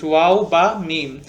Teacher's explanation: these three letters are pronounced from the Two Lips